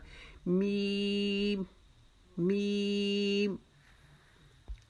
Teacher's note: ہونٹوں کے جو ہمارا اندر کا خشک حصہ ہے اس کو ہم آپس میں ملائیں گے، جہاں پہ عورتیں آؤٹ لائن لگاتی ہیں لپسٹک کی، یہ اس سے دونوں حصوں کو آپس میں ملائیں گے تو یہ میم ادا ہوگا اور یہ باریک آواز میں ادا ہوگا.